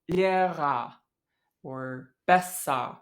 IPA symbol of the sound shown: ɐ